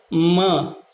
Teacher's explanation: दोनों होठ मिला करके नासिका से जब ध्वनि निकलती है